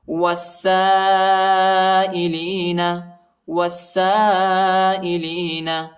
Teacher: وہ کو سین کے ساتھ ملائیں گے، سین پر شد آئے، سین کو شدت کے ساتھ سختی کے ساتھ پڑھیں گے، الف اور لام نہیں پڑھا جاتا، الف اور لام پر حرکت نہیں. اور اس الف پر جو ہے بڑا مد آئے، اس کو تقریباً 3-4 سیکنڈ تک کھینچیں گے